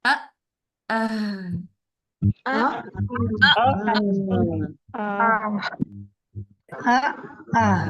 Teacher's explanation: हमजा साकिना में आपको महसूस हो कि आपके वोकल कॉर्ड्स बंद हो रहे हैं, ठीक है। एकदम से आवाज आपको लगेगी ये रुक गई।